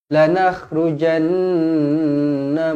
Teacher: Nun yang bertanda sabdu wajibul ghunnah dengung dua harakat